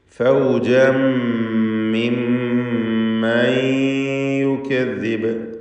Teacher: ശേഷം ഫാ വന്നതുകൊണ്ട് അപ്പോൾ മിൻ കുല്ലി ഉമ്മത്തിൻ ഫൗജൻ മിമ്മൻ യുകദ്ദിബ്. ഫൗജൻ എന്നതിലെ തൻവീനിനെ ശേഷമുള്ള മീമിൽ പൂർണ്ണമായും ലയിപ്പിച്ച് മണിക്കുക. ശേഷം ഷദ്ദുള്ള മീം വീണ്ടും ആവർത്തിക്കുന്നു.